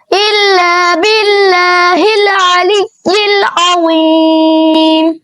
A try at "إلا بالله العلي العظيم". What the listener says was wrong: شاباش، ابھی بھی تمہارے جو ساکن حروف ہیں یہ ہلنے نہیں چاہیے۔ چوتھا کلمہ توحید۔